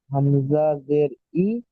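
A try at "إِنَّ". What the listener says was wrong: হামজা জের নয়, নুনের উপরে কি এসছে? তাজদিদ এসছে। হামজা নুন জের ইন, নুন জাবার না, এখানে তাজদুল অক্ষরকে তার আগের অক্ষরের সাথে মিলিয়ে একবার পড়তে হবে, একবার নিজে নিজে পড়তে হবে।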